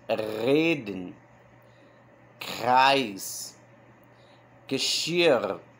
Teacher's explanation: Então Reden é R, Kreis também, né? Mas o Geschirr também tem esse som de gagarejo, né? O R.